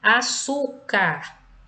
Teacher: Açúcar é o su, a penúltima sílaba pronunciada com mais intensidade. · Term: paroxítonos